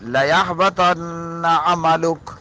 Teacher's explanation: یہاں لام تاکید کا ہے اور نون مشدد ہے، جسے نون ثقیلہ کہتے ہیں، ہاں جی، لَيَحْبَطَنَّ عَمَلُكَ، حالانکہ نون مشدد کے بعد حروف حلقی میں سے عین آ رہی ہے، لیکن میم مشدد اور نون مشدد یہ ایسے ہیں کہ ان میں ہر حال میں غنہ ہوگا